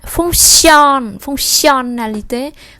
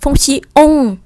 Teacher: on này người ta nối sang n và đọc như tiếng Việt á